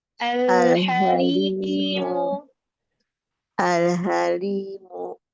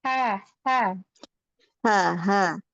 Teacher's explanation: Pakai ha tenggorokan tengah, lembutkan.